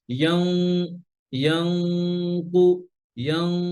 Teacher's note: জিহ্বার গোড়া, উপরে নরম অংশ, ইয়াংকু ওখানে লাগাইয়া। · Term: কফ